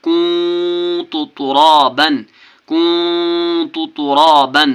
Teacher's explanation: نون ساکن کی آواز کو ناک میں چھپا کر پڑھنا ہے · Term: اخفا